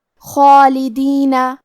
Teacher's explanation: کلمت خالدینہ میں خا کی ادائیگی حلق کے اوپر والی حصے سے ہے. خا حروف التفخیم میں سے ہے تو ہم یہ حرف کو بھاری آواز میں پڑھیں گے، اور کیونکہ اس پہ کھڑا زبر ہے تو یہاں بھی ہمیں مد الف کو تفخیم سے مطلب بھاری آواز میں ادا کرنا ہے.